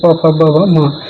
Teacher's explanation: फिर ओष्ठ से दोनों ओठों से बोलते हैं, जब प वर्ग आता है